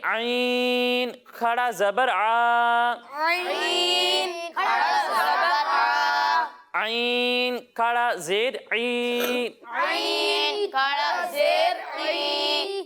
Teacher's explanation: کھڑی حرکات کو بھی ہم ایک الف کے برابر کھینچ کر پڑھیں گے. یعنی جس طرح ہم نے حروف مدہ کو ایک الف کے برابر کھینچا تھا اسی طرح کھڑی حرکات کو بھی ایک الف کے برابر کھینچ کر پڑھیں گے.